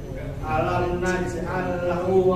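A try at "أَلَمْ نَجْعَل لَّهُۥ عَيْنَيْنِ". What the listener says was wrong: Ya, huruf jimnya tidak C, bukan naj, tapi naj. Alam punya dua harokat. Ainain.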